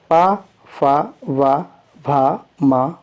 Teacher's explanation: जिन व्यंजनों के उच्चारण में दोनों ओठों द्वारा सास का अवरोध होता है ओट व्यंजन कहलाते हैं पा फ वा भा मा ओट व्यंजन